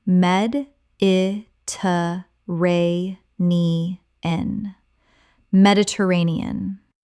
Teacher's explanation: Six syllables with the stress on the fourth.